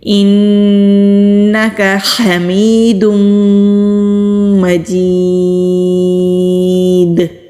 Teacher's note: دال کو ساکن کر کے رکیں گے، تو پھر کلکلا کریں گے